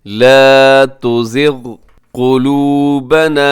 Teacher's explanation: اس میں قاف موٹا ہے، اسے آپ نے قلوبنا نہیں پڑھنا بلکہ قاف کو موٹا رکھنا ہے